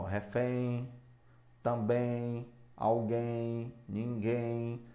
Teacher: olha a tonicidade na última sílaba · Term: oxítonas